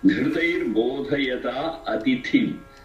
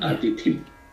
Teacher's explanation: That atithi is Mahaprana, atithim.